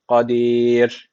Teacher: Ra harfi cezimli. Öncesindeki harf alttan bağlandığı için ra harfi burada ince okunması gerekiyor